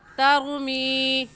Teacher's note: را ساکن کو پر یعنی موٹا کر کے پڑھیں گے، ایسے کہیں گے ترمی.